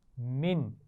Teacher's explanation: اس نون ساکن پر غنہ نہیں ہوگا کیونکہ اس کے بعد حمزہ آ گیا ہے